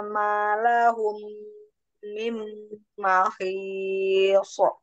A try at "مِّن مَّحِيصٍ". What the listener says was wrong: Jangan dipantulkan mim mahis, jangan ada sok gitu ya, karena bukan huruf mukallaf.